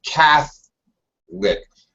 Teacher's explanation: When it's a noun, Catholic. First syllable stress, and we actually drop that middle syllable in English.